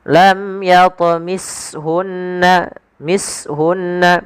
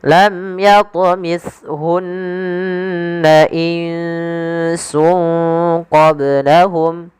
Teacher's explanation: Agar sempurna daripada makhraj daripada huruf ta, lidah harus ujung lidah yang harus menempel dengan gigi seri atas